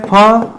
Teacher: ज्यादा वायु निकलती है। इसलिए इसे महाप्राण वाली कैटेगरी में भी रख सकते हैं। तो एक तो घोष नहीं करना है।